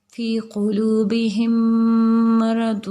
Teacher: پہلی میم کو دوسری میم کے ساتھ ملا کر ایک الف کے برابر غنہ کریں گے